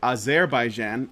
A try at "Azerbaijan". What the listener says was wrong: Azerbaijan. only stress the Jan. Azerbaijan.